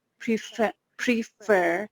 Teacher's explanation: we have put stress on the second syllable